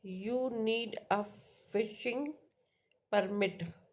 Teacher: For example, the word permit is stress on the first syllable.